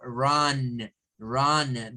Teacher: donde la U suena una especie de AU, de A con U